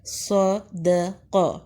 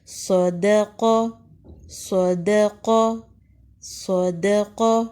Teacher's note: صاد میں موٹی سیٹی کی آواز آئے گی ، صدق، صاد زبر صا، دال زبر دا، قاف زبر قا،